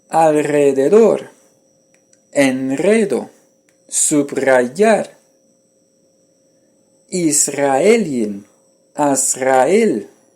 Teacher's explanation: le R n'est pas doux mais fort, même représenté par un R simple. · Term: phonème apicalvéolaire vibrant